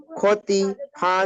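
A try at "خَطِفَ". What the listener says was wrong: টান হয়ে গেল। মোটেই হারাকাত যুক্ত অক্ষরকে মোটেই টান দেওয়া যাবে না। হতিফা, হতিফা পড়ুন। হতিফা।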